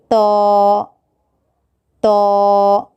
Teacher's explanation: زبان کی نوک کو اوپر کے دانتوں کی جڑ کو لگانے سے طا ادا ہوتا ہے